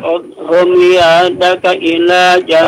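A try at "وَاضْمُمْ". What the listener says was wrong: Wadmum. Wadmum. Dotnya jangan dikolkolah ya.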